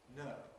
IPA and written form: nəʊ (no)